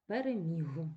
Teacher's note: слово переміг точно так же людина оглушила а не можна оглушувати в кінці слова дзвінки приголосні вимовляються чітко